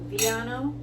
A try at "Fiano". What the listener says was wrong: Fiano. Fiano with an F. F-I-A-N-O.